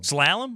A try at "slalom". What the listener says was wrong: It's slalom. It's not what I feel like you're saying salmon, like that Raider rookie from Hard Knocks. Spring corrected you originally, like in the room. slalom.